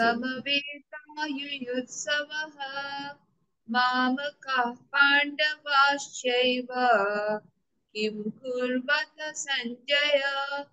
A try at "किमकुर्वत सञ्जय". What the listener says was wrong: it's not Kim. Each and every letter in Sanskrit is important.